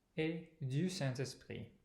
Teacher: there's a nasal vowel in Saint, which is kind of in the process of changing